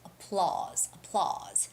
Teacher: applause itself is pronounced applause with the stress on the second syllable